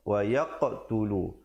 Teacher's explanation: ada pantulan dan dibulatkan huruf qaf, jangan pula pepeskan, jangan pula bunyi wayaqtulu.